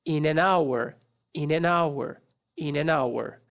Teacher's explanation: olhada nela aqui olhem aqui esse finalzinho dessas três últimas palavras in and hour a gente junta tudo isso aqui e fala um som só para três palavras